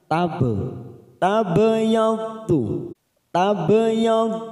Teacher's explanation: ada huruf ba sukun kita pantulkan namanya bacaan Qalqalah sugro karena mati di tengah kalimat jangan lupa dipantulkan tab tabadu tabadju